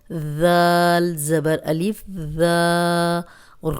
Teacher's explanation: اب یہ ذال نرم ہے، سیٹی کی آواز نہیں آئے گی.